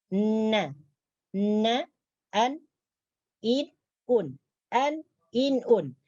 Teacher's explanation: Jadi cara membacanya adalah permukaan tepi hujung lidah diangkat ke gusi atas gigi. Ke gusi atas gigi gunting, dan langit-langit lembut diturunkan. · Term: huruf nun